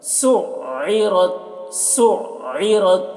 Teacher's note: عین ہے تو اس کو حلق صدا کرتے ہیں تو سُعِّرَتْ سین کو عین سے جب ملائیں گے تو آواز حلق میں پہنچے گی پھر یہ آواز ڈبل نکلے گی کیونکہ تشدید اس میں تو 2 بار پڑھنا ہے سُعِّرَتْ سُعِّرَتْ